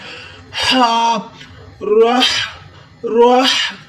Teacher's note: हा को हलक से आवाज देनी है